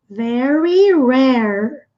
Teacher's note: Olha o som do R no inglês, bem enrolado.